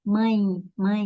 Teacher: esse E representa o fonema I, mãe, mãe. Então, vogal mais semivogal, certo?